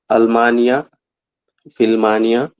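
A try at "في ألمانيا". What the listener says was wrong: No, not Filmania. this Hamzatul Qata, right? So you have to read this Hamza. don't say Filmania, no. Fi Almania. fi Amrika.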